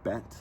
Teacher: So most English speakers use their version of the vowel in bet, to get that epsilon. Bet is a little bit lower and a little bit more towards the center of the mouth than a Greek epsilon or epsilon iota seem to be.